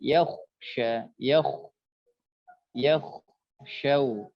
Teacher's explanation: Ya dengan kha, ketika kha itu dia sukun maka tebalkan